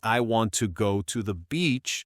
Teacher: the important words are want, go, and beach. The little words like I, to, and the are unstressed. This creates a rhythm.